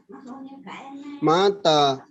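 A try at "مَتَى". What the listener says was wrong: Mata mimnya tidak panjang, Pak.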